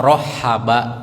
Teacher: pakai ha kecil, pakai ha yang makhrajnya tenggorokan tengah. Ha ya, tenggorokan tengah.